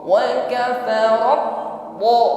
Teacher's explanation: perhatikan ketika menekan huruf ba, di sini ada aliran suara yang tertahan, seolah-olah putus di situ ya. Memang tertahan karena syiddah.